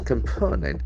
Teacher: The first O will be a sound, and the second O will be O sound, and last E letter will be have a sound. Component, and the accent falls on the second syllable.